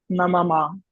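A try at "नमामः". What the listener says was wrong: See, you should say it long. Namami, namavaha, namamaha.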